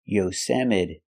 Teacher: The T is pronounced with a fast D. Yosemite. The E at the end is pronounced with a long E like green beans.